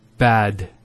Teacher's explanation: notice the elongation of the a sound